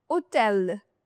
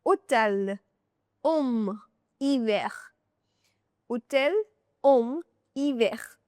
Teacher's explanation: That H in French is always silent. It is never ever pronounced, the H in French. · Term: silent H